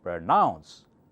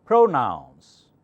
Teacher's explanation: Pr, softer, and nouns louder.